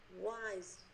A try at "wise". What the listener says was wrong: Đúng rồi nè.